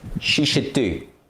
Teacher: should needs to be pronounced together with she and do